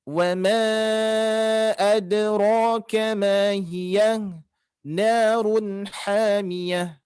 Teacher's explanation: Terus yang ayat 10-nya wama, di sini ada tanda alis, hati-hati dibaca panjang ya. Karena bertemu alif berarti dia mad 4 harokat atau sampai 5 harokat.